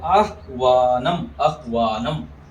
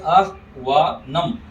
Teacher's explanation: आधा है, और व पूरा है, तो आह्वानम, आह्वानम। ह आधा होने से आह वा नम, ऐसे बोलेंगे